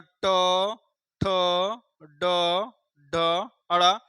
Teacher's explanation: जिह्वा के जो हम मोड़ करके ऊपर ले जाते हैं, तालु के पिछले भाग को ले जाते हैं, तब आप बोलते हैं ट, ठ, ड, ढ, अड़ा। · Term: मूर्धन्य व्यंजन